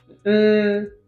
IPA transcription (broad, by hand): m, n, ŋ